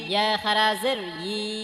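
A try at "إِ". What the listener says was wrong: এটা ই বলা যাবে না, ই ই জিবার মধ্যখান থেকে ই।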